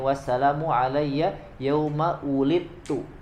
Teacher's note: langsung ke huruf ta ya, tidak dibaca huruf dalnya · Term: Idgham mutajanisan